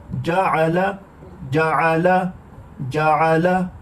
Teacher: عین حروف حلقی میں سے ہے، اس کا مخرج وسط حلق ہے، درمیان سے گلے کے درمیان سے عین ادا ہوتا ہے۔